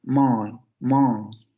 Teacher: La lengua se va hacia la parte posterior, la boca está completamente abierta, no hay labialización